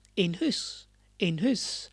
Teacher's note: you say it quicker and you don't stress the in and it became an